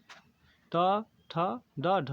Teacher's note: ट, ठ, ड, ढ जो होते हैं मूर्धन्य ध्वनि होती है